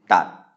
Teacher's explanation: It's going to have a low tone again because it's mid-class